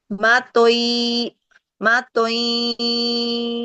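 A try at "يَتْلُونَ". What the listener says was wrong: Enggak, masih denging itu. Matuiya, tuiya, tuiya. Alirkan aja, tapi jangan tui, tui. Itu terlalu berdenging.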